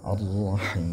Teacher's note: Ra-nya tebal ya, ra-nya tebal, Rahman panjang, ra-nya tebal lagi, Rahimnya juga panjang 6 harakat